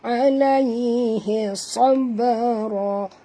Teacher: ba ni dia mati di tengah-tengah kalimah, maka di sini hukumnya qalqalah sughra, lantunkan dia